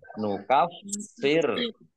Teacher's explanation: fa-nya dibaca double, ada tasdidnya, biar tampak double maka harus ditekan.